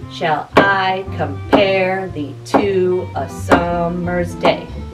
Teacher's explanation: each contain an unstressed beat followed by a stress beat some people think it sounds like a heartbeat or horse hooves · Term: iambic pentameter